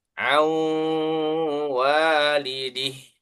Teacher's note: yang pertama an walidihi ya tulisannya an pakai nun sukun walidihi ketika dibaca bukan an lagi akan tetapi Nun sukunnya idgham atau masuk ke wau